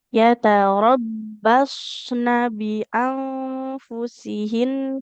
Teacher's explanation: nunnya fathah tidak bertemu alif enggak boleh panjang ya